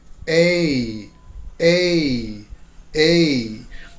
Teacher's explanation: have a kind of a neutral e a a a so the neutral sound is what we call the schwa and that's right in the middle of your mouth